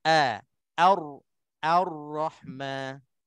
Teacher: Walaupun ra tu tebal, kita tipiskan a tu dulu, baru kita pindah kepada ra yang tebal untuk munculkan ra yang kuat